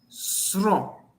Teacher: You roll the tongue along the alveolar ridge.